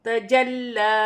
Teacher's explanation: لام مشدد ہے اور لام پر کھڑی زبر ہے، اسے بھی 1 الف کی مقدار کھینچ کر پڑھا جائے گا۔ وقف کی صورت میں ایسے پڑھا جائے گا جیسے لکھا ہے، جیسے تجلی۔